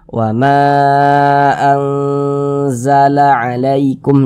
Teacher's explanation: cara membacanya itu disamarkan kemudian didengungkan. Jadi antara kadar samar dan kadar dengungnya itu dia seimbang.